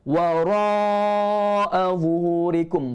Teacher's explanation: Ra kita baca dengan tebal dan kita baca panjang 4 atau 5 harakat, mak wajib mutasil kat situ.